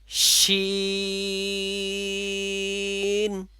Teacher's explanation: শিনের মাখরাজ হলো জিহ্বার মধ্যখান উপরের তালুর সাথে লাগবে